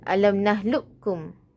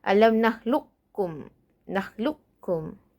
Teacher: Yang pertama ialah idgham kamil, iaitu hilang sifat al-isti'la bagi huruf qaf. Cara bacanya alam nahlukum.